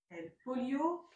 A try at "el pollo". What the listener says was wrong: El polio. Le polio, c'est une maladie.